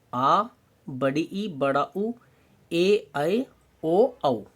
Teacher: अगर ह्रस्व से दुगना समय लगे तो कौन से आएंगे, दीर्घ स्वर